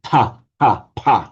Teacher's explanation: We can very easily say ta, pa, pa. We do it in English. You've got to slightly exaggerate the puff of breath, but we can do it.